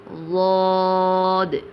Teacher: ضاد کی آواز موٹی اور جماؤ کے ساتھ نکلتی ہے اور سائیڈ سے، منہ کے سائیڈ سے اس کی آواز نکلتی ہے